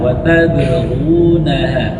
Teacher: qalqalahnya tipis karena huruf ba adalah huruf istifal. Istal itu huruf yang pangkal lidahnya tidak naik ke langit-langit belakang.